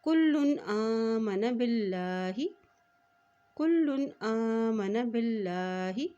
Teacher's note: वल मुअमिनून, वल मुअमिनून कुल्लुन, कुल्लुन आमना, कुल्लुन आमना बिल्लाही। यहाँ देखिए अल्लाह का नाम बारीक अदा किया जाएगा क्योंकि अल्लाह के नाम से पहले ज़ेर आ गया है